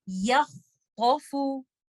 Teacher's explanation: Letter خا رخاوا کا بھی لیٹر ہے, لیٹر خا حمز کا بھی لیٹر ہے. تو ہم نے اس کو ٹائمنگ بھی دینا ہے رخاوا کا اور ہم نے یہاں پر حمز بھی کرنا ہے. اور یاد رکھنا ہے کہ لیٹر خا استعلا کا بھی لیٹر ہے, یہاں پر اس کو ہم تفخیم کے ساتھ بھی پڑھیں گے. · لیٹر خا استعلا کا بھی لیٹر ہے, یہاں پر اس کو ہم تفخیم کے ساتھ بھی پڑھیں گے. اور یا ایک لائٹ لیٹر ہے تو اس کو پڑھتے ہوئے دھیان رکھیے کہ آپ نے یا کو ہیوی نہیں کر دینا خا کی وجہ سے.